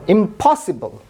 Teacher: আমরা ফ এর উপর চাপ দিচ্ছি, এজন্য স্ট্রেস দিচ্ছি, এজন্য এটা অ্যাসপিরেটেড হচ্ছে